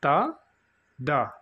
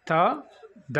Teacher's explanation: upper teeth రిచ్ అంటే పల్ల వెనకమాల భాగానికి టచ్ అవుతుంది అన్నమాట అది so tip of ద tongue touches against ద upper teeth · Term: డెంటల్